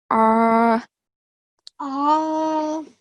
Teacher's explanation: Hamza comes from bottom of the throat, and Ain comes from middle of the throat.